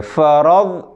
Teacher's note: ضاد کو کلکلا نہیں کریں گے، اس کے بعد ہم سختی کریں گے، موٹا کریں گے. فرض منہ بھریں گے، فرض فرض غلط ہو جائے گا.